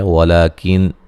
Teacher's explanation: یہاں نون ساکن کا اظہار ہے، غنہ نہیں کریں گے